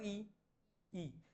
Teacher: आपली जीभ पुढे जाते टाळूला